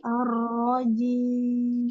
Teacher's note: Ar-rajim, rohnya dilamakan, tasdid.